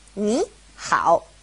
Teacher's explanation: if it's a third tone and a third tone next to each other, ni, hao, it changes to a second tone and a third tone